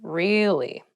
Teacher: to show that you're not so interested in the conversation with downward intonation